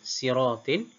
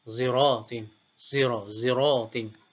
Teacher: kumbul baca dengan sin, manakala khalaf baca dengan ismam. Siratin kumbul baca sin, siratin.